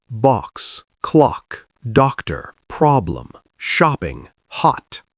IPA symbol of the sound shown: ɒ